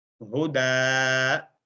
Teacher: دن جو ساؤنڈ ہے نون والی آخر میں تنوین والی، وہ وہاں سے ڈراپ ہو جاتی ہے وقف کی حالت میں